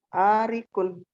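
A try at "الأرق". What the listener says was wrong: Al-ariku. Di situ ada alif lamnya al-ariku.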